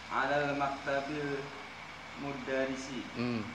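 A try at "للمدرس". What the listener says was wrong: Alal maktabi Itu ada lamnya depannya. Lil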